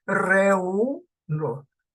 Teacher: O en esta, reu, no. Vocal abierta la E, vocal cerrada la U, y la U suena con más fuerza. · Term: hiato acentual